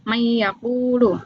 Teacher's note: Cara membacanya yaitu dibaca masuk dengan dengung dua harakat. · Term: idgam bighunah